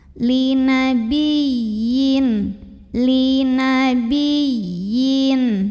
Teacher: Ada ya tasydid, tapi sebelumnya bukan tanwin, bukan juga nun sukun, maka ini bukan idgham, tidak perlu ditahan. Kita cukup pakai nabar, jadi agak dinaikkan intonasinya sedikit.